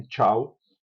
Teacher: gerando um ruído de fricção logo após o relaxamento oclusão. Aqui também o vel do palato encontra-se levantado e o fluxo do afasta apenas pela cavidade oral. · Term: africadas